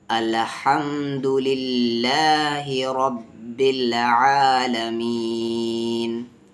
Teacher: अल्लाह के लाम को हम तरकीक करेंगे यानी पतली आवाज़ से पढ़ेंगे